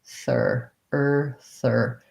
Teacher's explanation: So thir is stressed in this word, and then sti is light and unstressed.